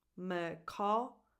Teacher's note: So the stress is on caw